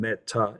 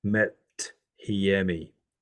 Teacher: the last consonant will be affected by the rough breathing. So from meta, it becomes methiemi.